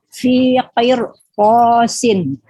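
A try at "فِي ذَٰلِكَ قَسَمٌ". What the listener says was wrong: Oke, bagus.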